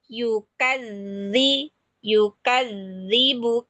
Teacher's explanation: dibaca dengan cara tasdid berarti ditahan